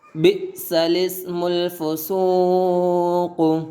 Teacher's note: بئس الاسم الفسوق، اس کلمے میں لام سے پہلے، اس کلمے میں لام سے پہلے اور لام کے بعد، لام سے پہلے اور لام کے بعد دونوں الف نہ پڑھیں بلکہ لام کو زیر دے کر پڑھے